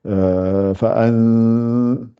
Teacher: c'est comme vous faites le son 50-50 par le nez et par le, par la bouche. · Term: ikhfa